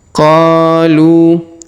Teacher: Huruf Lu kita panjangkan 2 harokat karena waw di depannya, sedangkan alifnya tidak dibaca ya.